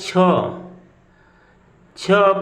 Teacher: छ को जब हम लोग बोल रहे हैं तो भी हमारी जिह्वा ऊपर के तालु को स्पर्श कर रही है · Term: तालव्य वर्ण